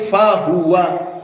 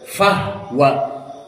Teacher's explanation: So not say fa huwa, but fahwa with sukunil ha.